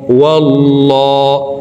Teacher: আল্লাহ শব্দের আগের হরফে জবর আছে এই কারণে এই লামকে ল বলে পড়ব অর্থাৎ মোটা করে পড়তে হবে